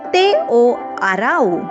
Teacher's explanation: It's almost always used as grammatical particle, not as a word by itself. Even though we write it as wo, we usually pronounce it simply as o.